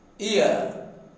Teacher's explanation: The lips are neutral for both the phonemes. The tongue changes from tense to lax. · When ear is produced, the lips are neutral for both the phonemes.